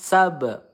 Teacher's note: ba sukun ya qalqalah sugro memantul